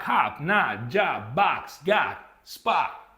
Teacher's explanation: My jaw goes down. Thus, I am having this open vowel sound produced